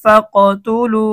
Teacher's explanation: এই 5টা হরফে যদি জজম হয় তাহলে কলকলা করতে হয়। কফের মধ্যে জজম আসছে, এজন্য আমাদেরকে কলকলা করতে হবে।